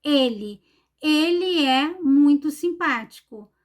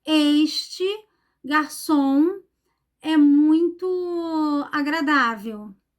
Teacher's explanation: os pronomes que marcam masculino eles tem a pronúncia fechada